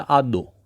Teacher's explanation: वर्ण जो है वह महाप्राण से अल्प प्राण की ओर बढ़ते दिखाई देते हैं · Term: अल्प प्राणी कारण